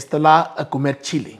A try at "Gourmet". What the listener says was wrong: Gourmet. The T is silent.